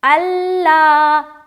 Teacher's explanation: پورا معلوم ہونا چاہیے کہ لام ہم 2 بار ادا کر رہے ہیں۔ اگر کوئی الا پڑھے گا تو اس سے کیا معلوم ہو رہا ہے کہ لام ایک ہی بار ادا ہو رہا ہے، ٹھیک ہے؟ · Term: تشدید